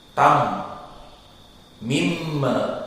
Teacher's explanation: Dan yang paling dominan dari hukum mim adalah mempunyai sifat yang berbeda dengan yang lainnya dan tidak ada lawannya, adalah gunnah. Maka di saat disukunkan dan ditasdidkan, keluar makhraj dari hidung.